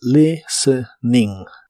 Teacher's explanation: la t de la palabra listening no se pronuncia